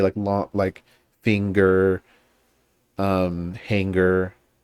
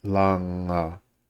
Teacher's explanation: in English a lot of the time we have the ng sound and then immediately following a G sound